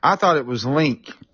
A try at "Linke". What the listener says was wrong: Yeah, most people think the E is silent, but yeah, it's Linke.